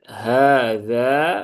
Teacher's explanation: haknya panjang, zalnya juga panjang, dua-duanya mad asli, dua harokat. Kalau berhenti di sini tapi, ya, kalau lanjut ya zalnya pendek.